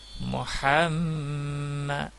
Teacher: میم مشدد ہے، گنہ کے ساتھ ادا ہوگا